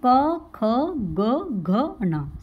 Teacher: इनका उच्चारण स्थान दोस्तों कंठ होता है। कंठ यानी कि गले से बोला जाता है। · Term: क वर्ग